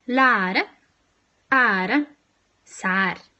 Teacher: This vowel is near open, front, and unrounded. So your tongue should be quite low and quite a bit forward, and your lips should not be rounded.